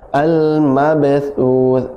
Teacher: tha ujung lidah bertemu dengan ujung gigi sari atas. Dan sukun yang disukunkan pun tha juga, ujung lidah yang bertemu dengan ujung gigi sari atas.